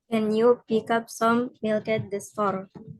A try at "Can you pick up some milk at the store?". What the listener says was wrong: Yes, sudah betul. Tinggal intonasinya kurang naik dikit ya.